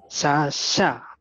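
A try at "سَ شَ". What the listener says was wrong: Sasha. Sasha. Sasha. Sasha. Kelihatan tuh, mulutnya belum ngebuka. Mulutnya tuh. Saya lihatin mulutnya tadi. Sasha. Sasha.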